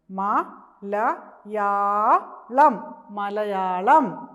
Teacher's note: യ എന്ന അക്ഷരത്തിന് ദീർഘം വന്നേക്കുന്നത് കൊണ്ട് നമ്മളിത് നീട്ടി പറയണം